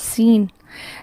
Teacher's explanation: جب ہم سین کو ادا کرتے ہیں یہ والی ساؤنڈ جس کو سیٹی کی سی آواز کہتے ہیں، یہ اس کی صفت ہے